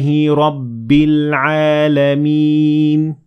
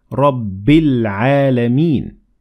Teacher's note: we ignored the following hamzat wassel because we kept on reading